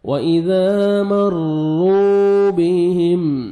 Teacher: میم ساکن کا اظہار ہے، جلدی پڑھیں گے